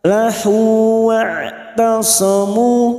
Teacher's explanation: huruf ain jangan samakan dengan hamzah. Huruf ain yang memiliki sifat tawasud dan jahar.